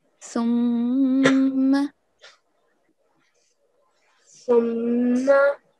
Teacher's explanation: whenever we have a tashdeed on top of meem or noon, we have to prolong it for 2 seconds, obviously, but we have to hold the nasal sound as well